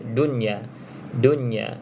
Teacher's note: Tetapi dia adalah izhar mutlak sebab kita baca dia jelas